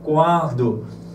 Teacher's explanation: Quando já comecei a perceber que há uma vibração nas fossas nasais